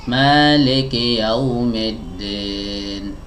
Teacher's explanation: ini khas roknya tidak sempurna ya sebabnya karena rahang bawahnya tidak diturunkan secara sempurna kalaupun diturunkan lidah bagian tengahnya tidak mau diangkat ya harusnya dua